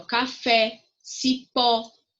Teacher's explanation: são palavras oxítonas porque a última sílaba é mais forte